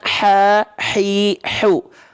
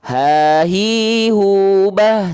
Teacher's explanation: Ya, nih H kecil dari tengah tenggorokan, ha, hi, hu, berbisik pedas, nafasnya.